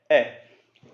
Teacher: आपका जो मुंह है वो आधा खुल जाएगा, ज्यादा नहीं खुल रहा, आधा ही खुल रहा है, तो ये होगा आपका अर्धविवरित।